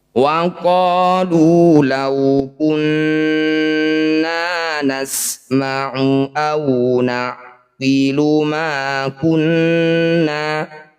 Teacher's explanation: Wa qalu law kunna, nun bertasydid, disebut bacaan gunnah musyaddadah. Bunyi nun dengungkan 2 harokat.